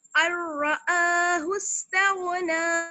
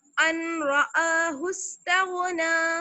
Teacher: अगर हम इसको ऐसे पढ़ दें, अनरआहु इस्तगना, तो ये गलत हो जाएगा, नून की साउंड बिल्कुल खत्म कर देनी है हमें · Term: इदगाम